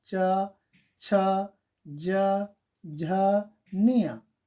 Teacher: ये उच्चारित करने पर तालु, जो जीभ है तालु को टच करता है। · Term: तालव्य व्यंजन